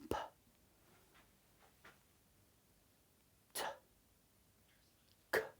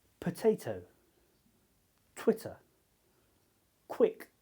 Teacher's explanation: So when you say these sounds a puff of air should come out of your mouth · when you say these sounds, a puff of air should come out of your mouth. You can check to see if you're doing it right to put your hand in, by putting your hand in front of your mouth, or you can use a little piece of paper and to see if it moves like this. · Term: aspirated